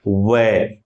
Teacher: की तरह लगभग मिल जाते हैं हम बोलते हैं व तो पूरे होठ नहीं मिलते थोड़ा स्पेस रहता है बीच में लेकिन लगभग होठ बंद हो हैं इसलिए इसे हम परंपरागत रूप से क्या कहते हैं ओष ध्वनि · व के उच्चारण में जीभ नहीं बल्कि दोनों होठ प वर्ग की तरह लगभग मिल जाते हैं हम बोलते हैं व तो पूरे होठ नहीं मिलते थोड़ा स्पेस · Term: ओष्ठ्य ध्वनि